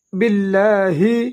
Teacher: با کو لام کے ساتھ ملائیں گے، لام کو دو حرکات لمبا ادا کریں گے